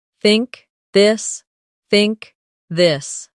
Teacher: In words like think or this. The tongue comes gently between the teeth. For think it's soft. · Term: th sound